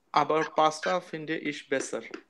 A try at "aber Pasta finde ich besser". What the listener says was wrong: Sehr gut.